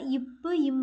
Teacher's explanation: இரு உதடுகளும் மேல் உதடும் கீழ் உதடும் பொருந்துவதால் பிறக்குது